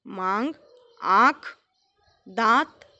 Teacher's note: उच्चारण करते समय नाक और मुंह दोनों का प्रयोग किया जाता है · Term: अनुनासिक